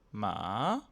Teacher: L'astuce pour le réussir, c'est de bien se concentrer sur le début bas et ensuite de monter doucement. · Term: le ton montant